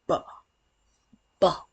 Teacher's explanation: produced with vibration of the vocal cords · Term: voiced sounds